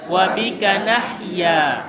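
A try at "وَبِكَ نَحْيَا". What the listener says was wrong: Haknya masih kurang. Wa bika nahya.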